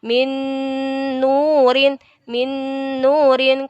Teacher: Jadi bacanya melebur dan mendengung. Min nurin, agak ditahan masuk ke huruf berikutnya. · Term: idgham biguna